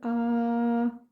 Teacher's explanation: کھڑا زبر کو ہم 2 سیکنڈ کی دیر لگا کر کھینچیں گے